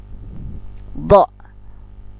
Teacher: Do, ujung lidah ke geraham atas atau ke geraham sebelah kiri atau kanan.